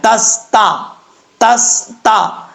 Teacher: اب تا کے بعد سین ہے، سین حروف صفیریہ میں سے ہے اور سیٹی کے ساتھ پڑھا جائے گا، دونوں تا کو بریک پڑھنا ہے، تس تا، تس تا۔